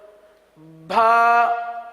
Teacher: بھا یعنی با کے ساتھ ہا کی آواز نکالی جاتی ہے